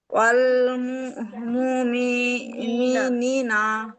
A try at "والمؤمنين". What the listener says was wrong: মাশাআল্লাহ, খুব সুন্দর।